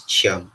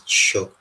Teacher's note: we have the palatal form of the cha sound, which is the chi